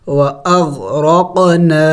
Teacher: آگے قاف ہے، حروف قلقلہ میں سے ہے، ساکن ہے، اس کو ہلا کر پڑھیں گے. وَأَغْرَقْنَا آلَ، حمزہ کڑی زبر آ، لام زبر لا، آلَ.